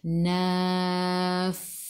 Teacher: Sin sifat hurufnya safir. Jadi kena bunyikan sifat huruf sin safir kena bunyikan bila berhenti. Jangan naf sahaja.